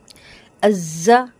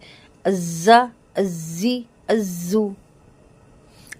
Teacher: زا کو سختی سے بزنگ ساؤنڈ کے ساتھ پڑھیں گے. ازا، ازی، ازو.